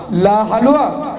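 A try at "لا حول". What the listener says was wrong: না দাদু, হালুয়া নয়, লা হাওলা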